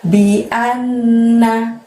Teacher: Bi-nya pendek, an-nya masukkan ke nun tasydid di depannya, ditahan, ditekan selama 2 harokat. Bi'an, sampai seperti itu baru selanjutnya mengucapkan na.